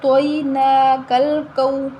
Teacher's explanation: واو لین ہے تو ہم اس کو بھی بغیر جھٹکا دیے بغیر لمبا کیے نرمی کے ساتھ ادا کریں گے.